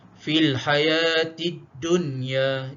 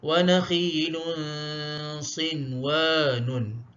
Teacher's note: bacaannya kita tidak baca dengan idgham ataupun dengung. Bahkan kita bacakan dia dengan jelas, izhar. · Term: izhar mutlak